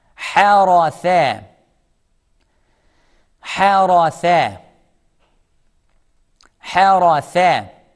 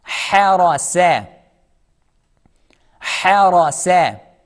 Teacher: Between the in the first example we have tha, in the second example we have sa. Tha, tongue letter, seen is not a tongue letter.